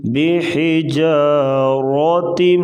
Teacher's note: میم ساکن کے بعد با آ جائے تو وہاں پر غنہ کر کے پڑھا جاتا ہے